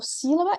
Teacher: quando eu falo sílaba, eu estou colocando a força na sílaba si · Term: sílaba tônica